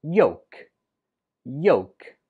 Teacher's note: When we spell it, we write it with an L, but when we speak it, we do not pronounce the L at all. It's just pronounced yolk. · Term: silent letter